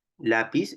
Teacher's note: esta p en lápiz es una oclusiva bilabial sorda